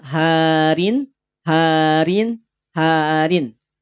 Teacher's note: dibacain baca dengan ada bunyi Nun sukunnya karena tanwin itu sama dengan nun sukun